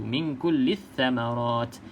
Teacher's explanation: pastikan lam jangan sebut sebab dia kosong, lam kosong, jangan kita sebut. Terus saja masuk dalam huruf yang bersabdu.